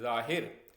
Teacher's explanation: जब हम ज़ौ का उच्चारण करते हैं तो हमारी जीभ ऊपर की तरफ जाकर थोड़ी सी कर्व हो जाती है।